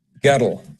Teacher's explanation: sometimes you'll have an extra syllable on the word, so that girl becomes guttle.